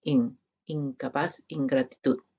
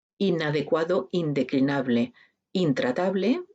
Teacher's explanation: todas son nasales en la vila vial la velar y alveolar todas son nasales pero son diferentes en el punto de articulación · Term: nasal velar